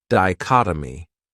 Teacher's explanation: this word has four syllables and the stress is on that second syllable dichotomy that third syllable has that schah that uh sound D